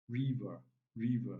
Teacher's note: So here we have the short e and we have the schwa sound. So the short E takes the primary stress.